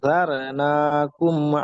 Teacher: ফাতহার জবরের পরে র সুকুন হয়েছে, এটা র মোটা হবে